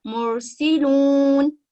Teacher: اگر را ساکنہ سے پہلے دمہ ہو تو بھی یہ را موٹی ادا ہوگی